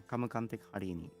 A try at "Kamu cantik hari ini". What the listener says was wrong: At least it was pretty good though. It's pronounced chantik.